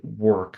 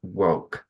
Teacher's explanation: I was saying an O instead of an R sound